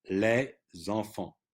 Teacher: But here, les enfants, okay? Now, the S, you see, of les is pronounced because of the liaison · the S is not pronounced when you just say les, but when it's followed by a vowel, you link it.